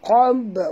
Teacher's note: bila dia mati di tengah kena lantun